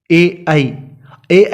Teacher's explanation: ए ऐ का उच्चारण करते हैं तब भी जीभ के आगे का भाग सक्रिय होता है, इसलिए ए ऐ अग्र स्वर है।